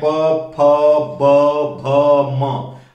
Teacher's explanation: आपके ऊपर और नीचे दोनों ओठ, ठीक है, एक दूसरे को स्पर्श कर रहे हैं, तो इनका उच्चारण होठों से होने के कारण इनका उच्चारण स्थान हम कह सकते हैं ओष्ठ है, ठीक है।